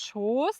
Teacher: da wird das O dann lang gesprochen